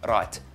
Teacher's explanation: just a tapped R it's like rolling your R but just for one little roll